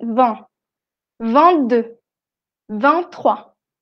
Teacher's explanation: Cuando pronunciamos el número solo o con una consonante, como con 22 o 23, la T no suena.